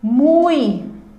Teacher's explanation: muito eu tenho a presença aqui de uma vogal nasalizada e uma semivogal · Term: ditongos